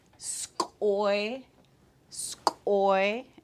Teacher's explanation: the glottalized K raised W